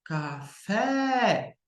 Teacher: café mais forte é o fé então você vê que ela é oxítona